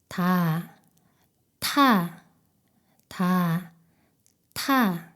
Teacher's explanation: 혀 끝이 윗 잇몸을 더 강하게 막았다가 강한 압력과 함께 터뜨리며 소리냅니다. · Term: 티읕